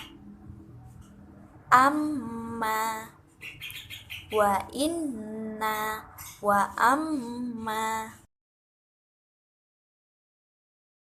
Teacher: sempurnakan tasydidnya kemudian didengungkan dan ditahan 2-3 harokat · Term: Nun tasydid dan mim tasydid